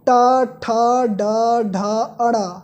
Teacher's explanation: ट वर्ग का उच्चारण करते समय हमारी जिह्वा थोड़ा सा मुड़कर तालव्य का स्पर्श करती है, जिससे इसका उच्चारण स्थान मूर्धन्य होता है।